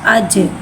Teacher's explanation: जीम के बाद साकिन है, लिहाजा इसमें कलकला हो रहा है, इसमें आवाज़ लौटेगी।